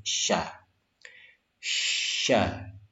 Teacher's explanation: syaa memiliki sifat tafasyi tafasyi itu ada aliran di dalam mulut kita